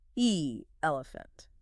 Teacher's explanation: Moving to the short E, the mid-front sound.